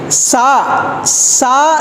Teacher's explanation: சாதாரணமாதான் சொல்லுவோம் சான்னு சொல்லும்போது என்ன வித்தியாசம் வருதுன்னா இந்த பல் இருக்கு பாருங்க கீழ் பல் வரிசை மேல் பல் வரிசை இது ரெண்டையும் ஓபன்ல வச்சிருக்கிறோம் நடுவுல நாக்கை கொண்டு வர்றோம் நடுவுல நாக்கை கொண்டு வர்றோம் ஆனால் மேல் வரிசை பல்லுலையோ கீழ் வரிசை பல்லு